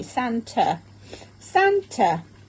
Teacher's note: in this word, the A maps to the schwa sound